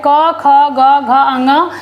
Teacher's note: ये कंठ से बोले जाते हैं। तो इसको हम कहते हैं कंठ।